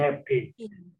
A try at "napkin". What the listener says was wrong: Okay, good, next one.